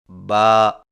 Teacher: होंठों के गिले हिस्से को सख्ती से मिलाकर बारीक आवाज में पड़े